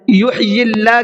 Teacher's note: یحیی اللہ کے اللہ کے لام کو باریک پڑھنا ہے، اس لیے کہ اللہ کے لام سے پہلے یا کے نیچے زیر ہے